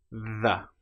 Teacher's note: The sound is made by putting your tongue either between your teeth or very close behind with a slight gap. The and then we let our vocal cords engage.